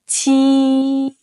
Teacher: To pronounce 柒, first, position your tongue at the back of your bottom teeth with the front slightly raised. Second, push out sharp bursts of air while keeping your vocal cords silent. Third, say it in a high, steady tone, like this.